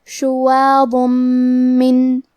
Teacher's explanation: شواظن، اور کیونکہ اس پہ تنوین پیش ہے پھر حرف المیم آتا ہے کلمت من، اور میم حروف الادغام بغنہ میں سے ہے، اور ادغام کا معنی ہے حرف کو حرف میں داخل کرنا، تو ہم یہ تنوین کو میم میں ملا کے غنہ اور تشدید کے ساتھ یہ حکم کو ادا کریں گے